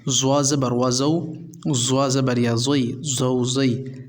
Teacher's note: یہ جو آپ کی زبان ہے جب آپ یہ زوا پروناؤنس کریں تو یہ زوا نکالتے وقت آپ اپنی زبان کی نوک کو آگے والے جو دانت ہوتے ہیں ان کی جڑوں میں آپ نے لگانی ہے